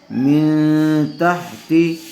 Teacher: غنّے کے ساتھ اخفاء ہوگا، نون ساکن کے بعد تا آیا ہوا ہے۔